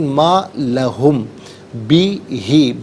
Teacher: میم ساکن ہے، اس کے بعد با آ رہا ہے، تو میم ساکن کو غننے کے ساتھ پڑھیں گے۔